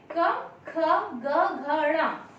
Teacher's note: जब ये वर्ण हम बोलते हैं तो हमारी वायु जो कंठ से निकलती है, कंठ को स्पर्श करते हुए बाहर आती है